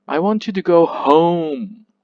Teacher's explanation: unstressed yeah the last word which is home is stressed so the first parts are pronounced weaker and faster and while the last word is pronounced louder and clearer